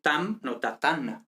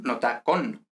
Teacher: la M final no se pierde, como habíamos dicho que suele pasar, sino que cambia a N, ¿vale? Entonces, tam nos da tan, no nos da ta, ¿vale?